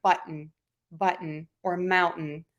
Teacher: for my glottal stop, I use that in words like button, or mountain